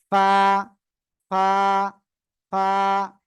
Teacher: নিচের ঠোঁটের পেট সামনের উপরে দুই দাঁতের আগার সঙ্গে লাগিয়ে হালকা বাতাস বের করে এক আলিফ টেনে আমরা এই অক্ষরটি উচ্চারণ করব।